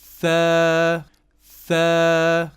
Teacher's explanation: So tha, remember, you stick your tongue out between the teeth.